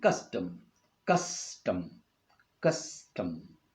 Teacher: a stressed syllable followed by unstressed syllable, as in custom, custom, custom. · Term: trochee